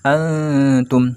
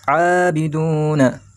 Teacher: nun sukun bertemu dengan ta, maka hukumnya ikhfa hakiki. Nah, maksudnya dibaca samar, dibaca kurang jelas ya.